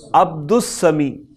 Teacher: سین جو ہے شمسیہ حروف میں سے ہے، لہذا اس میں الف لام نہیں آئے گا بولنے میں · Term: حروف شمسیہ